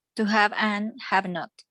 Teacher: porque regularmente el have y viene una vocal después, entonces vuelve como una sola palabra. Ellos hacen mucho lo que se llama linking o uniones.